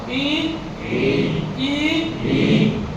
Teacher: जब बोलेंगे तो हमारी जो जीभ है वो ऐसे टाइट हो जाएगी, ऊपर वाले तालु को टच करने के चक्कर में रहेगी, टच नहीं होगी, लेकिन बोलो ई हुआ ना, यानी टच भी नहीं हुई, लेकिन ऊपर जाने के लिए बेबस मजबूर और लाचार बनेंगे जाने के लिए, ठीक है।